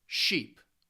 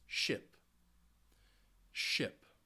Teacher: It's also going to be easier for you when you are making these sounds to go from that active smile to just that relaxing short I sound, that active long E sound with a smile, and then relaxing into the short I sound